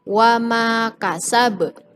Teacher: hurufba ada di dalam salah satu huruf Qalqalah tetapi ia terletak di akhir ayat maka disebut qolqolah kubro